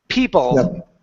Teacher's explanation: my tongue is coming up and it's touching the back of my teeth